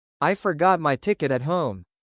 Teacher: In everyday American speech, the T at the end of these words is often unreleased, especially when followed by silence or another consonant. This makes speech smoother and more natural, avoiding a sharp burst of air at the end.